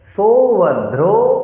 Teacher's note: सौ दीर्घस्वर, ভ মহাপ্রাণ, ধ্রো আবার দীর্ঘস্বর